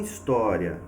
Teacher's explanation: em história, eu tenho a penúltima sílaba sendo a mais forte, a minha sílaba tônica